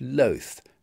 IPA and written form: ləʊθ (loath)